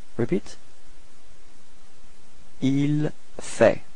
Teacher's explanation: So il fait. Same pronunciation, so final T is not pronounced.